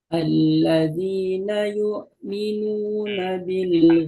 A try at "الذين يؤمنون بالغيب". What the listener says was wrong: Hamzah sukunnya masih ini ya, terbaca ain tadi. Jadi untuk hamzah sukun itu ada sifat jahar dan syiddah ya. Suaranya itu ketahan ya, tertahan, jadi tidak ada suara yang mengalir. Alladzina yu'minuna yu'minuna.